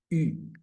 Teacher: Como una I con la boca de U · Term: U, la del francés